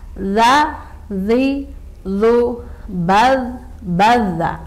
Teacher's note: Hati-hati tidak mantul. Dan juga ini bukan hamas, jadi tidak ada desahan udara ya, tidak ada udara yang berhembus.